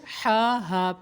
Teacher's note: اس ہا کو وسط حلق سے ادا کرنا ہے, حلق کے درمیان والے حصے سے